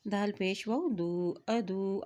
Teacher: क्योंकि वाव के ऊपर शद है इसलिए दाल की पेश को वाव के साथ मिलाते हुए पढ़ेंगे।